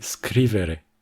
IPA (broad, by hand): ˈskriβ‑e‑re